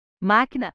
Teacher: máquina a sílaba mais intensa é a antepenúltima então é uma palavra proparoxítona